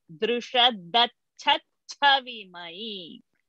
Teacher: the mahaprana ch is repeated and in between that we have one sh also coming